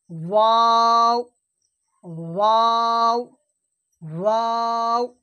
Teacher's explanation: দুই ঠোঁট না মিলিয়ে উচ্চারণ হয়। এই দু ঠোঁট না মিলিয়ে এই মধ্যখান থেকে মিডল থেকে উচ্চারণ হবে ওয়াও। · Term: ওয়াওয়ের মাখরাজ